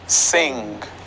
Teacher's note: sound i know it is funny wherein you say the ing you touch the back part of your tongue with the upper part of your mouth